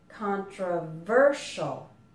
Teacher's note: in controversial, the stress is on the ver